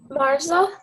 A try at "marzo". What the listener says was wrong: Try it one more time. Marzo. The Z in Spanish makes more of an S. It's not a really hard Z sound, so it's marzo. Hear the difference? Marzo. Marzo.